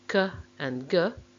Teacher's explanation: we make the obstruction at the velum or the soft palate sokka and ga are velar plosives or velar stops when we